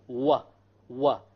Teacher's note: The wow occurs when you join the 2 lips together, but you don't make them touch. You make a circular hole, wa, wa. But you don't touch the inner lips together.